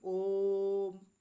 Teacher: प्लुत स्वर जो है इनके उच्चारण में तीन मात्राओं का समय लगता है